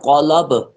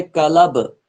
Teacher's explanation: اس قلب کو موٹا پڑھیں گے قاف کو، اس کا مطلب ہے دل۔ دوسرا ہوتا ہے قلب، کاف کو موٹا نہیں پڑھیں گے باریک پڑھیں گے